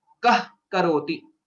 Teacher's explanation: Then the sound will become kah karoti. A half visarga or a sound like ha, hakara is what is heard. This sound is called jihvamuliya.